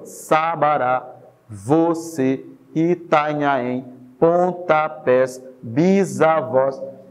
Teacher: A marcação da sílaba tônica está lá, na última sílaba. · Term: última sílaba tônica